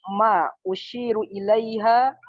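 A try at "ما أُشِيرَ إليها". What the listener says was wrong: Ma usyira fathah.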